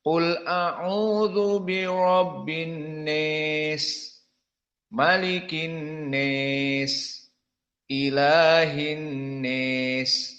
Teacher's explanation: maka semua dibaca dengan Al imalah alkubro